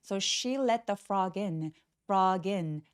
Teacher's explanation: So she let the frog in. 할 때 뒤 두 번째 단어가 모음으로 시작되기 때문에 앞에 자음을 받아서 frog이라고 연결해 주세요